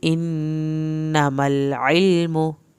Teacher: नून की शत पे अलिफ के बराबर देर लगाएं, इन्नमल लाम नहीं हिले, इल्मु आइन को हल्क से पढ़ें, मीम की पेश को लंबा नहीं करना।